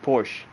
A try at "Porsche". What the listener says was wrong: It's Porsche. The E is there for a reason in German. Porsche.